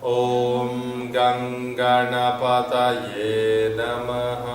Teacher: ನಮಃ ನಮಃ ಫ್ಲಾಟ್ ಇದೆ, ಏನು ಸ್ವರ ಇಲ್ಲ.